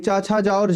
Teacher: संघर्ष स्पर्शी इसमें हमारा आएगा च छ ज और झ